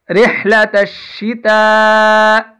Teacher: یہاں پہ تا کے اوپر مد ہوگی اور یہ تا باریک ہے